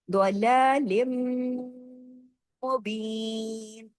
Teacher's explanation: لن کی جو تنوین ہے وہ ختم ہو گئی، لن کی آواز نہیں آئے گی، ادغام ہو جائے گا، لام کی آواز کس میں جڑے گی، میم میں، کیوں، میم پہ تشدید ہے.